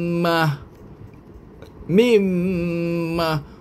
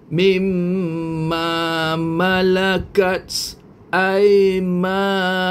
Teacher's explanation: Maka suara nun akan lenyap dan berubah menjadi suara mim beserta dengung.